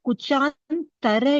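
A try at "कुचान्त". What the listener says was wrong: No, Kuchant. There is no R.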